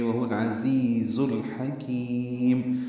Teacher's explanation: عین وسط حلق سے ادا ہوگا، دونوں تیز صفیر کی آواز سے ادا کریں گے، وہ العزیز الحکیم، الحکیم کے لام پہ بھی اظہار قمری ہوگا، ہا وسط حلق سے ادا کریں گے، کاف باریک ہے لمبا کریں گے، میم ساکن پہ اظہار شفوی ہے۔